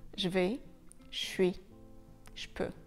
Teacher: quand le son je est suivi d'une autre consonne, c'est assez difficile de garder le je et il devient un petit peu un che